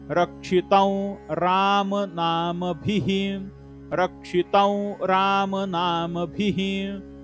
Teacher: त वरती अनुस्वार, अनुस्वाराच्या पुढे र हे अक्षर आहे, त्यामुळे औ चा उच्चार होणार अनुनासिक व